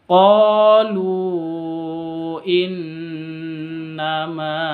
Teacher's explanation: Boleh dua ketuk panjangnya boleh empat ketuk boleh lima ketuk karena Mad Jaiz